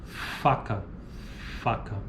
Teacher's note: Símbolo F. Fricativa lábio-dental desvozeada